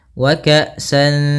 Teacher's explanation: Maka cara membacanya yaitu kita samarkan suara tanwinnya kepada huruf dal. Wa ka'san, seakan-akan langsung melafalkan huruf dal. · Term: ikhfa